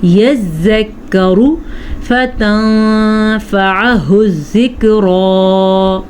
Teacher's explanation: اخفاء ہو رہا ہے کیونکہ نون ساکن ہے اور نون ساکن کے بعد فا آیا ہوا ہے، فا حروف اخفاء میں سے ہے۔